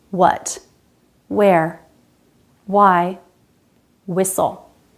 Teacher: These words have two different pronunciations, but the most common one is definitely with a silent H, just a clean W sound